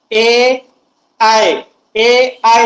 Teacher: कंठातून यांचा सूर तर निघतो, पण आपली जीभ जी आहे टाळूला स्पर्श करते